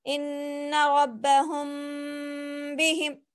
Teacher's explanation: اخفاء شفوی، یعنی کہ میم ساکن کے بعد با آئے تو غنے کے ساتھ اخفاء ہوگا